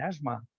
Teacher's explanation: es un fonema alveolar fricativo pero sonoro en asma